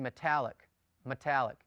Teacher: it's almost as if you don't pronounce the E you just run the M into the T